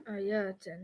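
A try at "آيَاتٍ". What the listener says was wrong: You're making it too long. Is there an alif there? Yatin. Is this a combination? Because the combination needs to be atin. So that's just straight jar. That's just easy jar.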